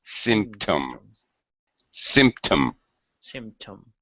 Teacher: symptom first syllable stress